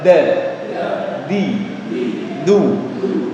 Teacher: ujung lidah ditemukan dengan pangkal gigi seri atas sebelum gusi ingat Lidah Tidak nyentuh gusi sama sekali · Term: Dal versi Arab